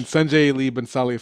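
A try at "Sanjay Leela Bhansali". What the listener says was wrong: Sanjay Leela Bensali You said Sanjay Lee Bhansali.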